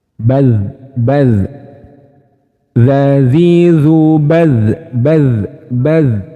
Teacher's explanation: Suara huruf dal yang ada titiknya, zal yang ada titiknya itu mengalir.